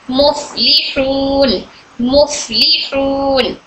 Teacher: हमारे ऊपर के दांत नीचे की होठ की तरी को टच हो रहे हैं।